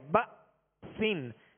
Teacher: با کے ساتھ حمزہ ساکنہ ہے، یہاں جھٹکا واضح کریں گے ، بأسن، سین کے نیچے 2 زیر کی تنوین ہے، آگے